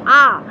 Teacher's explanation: মানে হচ্ছে আ, আকে কিন্তু আমরা আ যেটা বলছি আ, তো আমাদের জিভটা কিন্তু জিভের অবস্থান বা জিহ্বার অবস্থানটা কিন্তু একদম নিম্নে, সেই জন্য তাকে আমরা বলবো নিম্ন স্বরধ্বনি